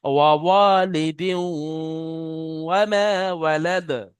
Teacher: তানবিনকে ওয়াও এর সাথে মিলিয়ে 1 আলিফ পরিমাণ গুণনা করে পড়তে হবে, একে ঈদগামে নাকিস বলা হয়।